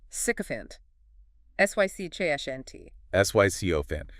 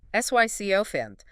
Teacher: Three syllables. Stress on the first.